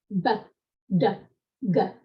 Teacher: you can't make those sounds without your vocal cords moving. So that basically is what I mean when I'm referring to voiced and unvoiced consonants.